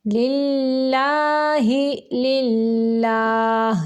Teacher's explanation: یہ اللہ کا جو لام ہے اس کو باریک پڑھیں گے کیونکہ اس کے پچھلے حرف کے نیچے زیر ہے. اگر زبر پیش ہوتی تو ہم اس کو پر پڑھتے.